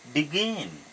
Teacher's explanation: যদি আমি begin verb লও there are 2 syllables and here the second one is more stressed than the first one